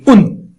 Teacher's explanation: ان کہیے تو آپ کی زبان اوپر ٹچ ہو گئی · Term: نون